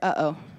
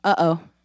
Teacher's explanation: All that's happening is those vocal folds are closing and opening. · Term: glottal stop